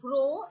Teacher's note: the lips are spread at the beginning and are loosely rounded towards the end